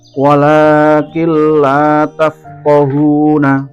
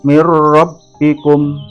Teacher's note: Cara membacanya, suara nun sukun bertemu dengan lam dan ro menjadi hilang karena dimasuk atau dilebur ke dalam huruf sesudahnya dengan tanpa dengung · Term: idgham bilahna, idgham bila gunah